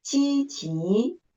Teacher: the second syllable is the word stress. We should make an emphasis of that syllable.